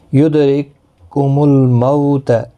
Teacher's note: دال ساکن پر قلقلہ ہوگا۔ رککم یہ والا قاف جو ہے بیچ میں کاف ساکن نہیں پڑھا جائے گا کیونکہ آگے مشدد حرف ہے، تو اس کاف کے ساتھ را کو ملایا جائے۔